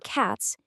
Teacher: For cats, you get a sharp, voiceless S sound.